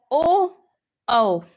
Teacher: याच्यात कंठ पण आहे आणि ओठ पण आहे म्हणून हा झाला कंठोस्ट्य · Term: कंठोष्ठ